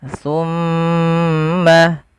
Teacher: Pada lafal bacaan tumma di sini ada bacaan ghunah pada lafal mim yang berharakat tasydid